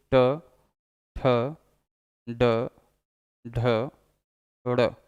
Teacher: ट, ट पर जीभ पीछे टर्न हो रही है, जबकि री में वाइब्रेशन होता था, री में वाइब्रेशन था इसलिए वो मूर्धा था। ट पीछे की तरफ टर्न कर रहा है, पीछे की तरफ जीभ मुड़ रही है, इसलिए ये मूर्धा है। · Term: मूर्धन्य व्यंजन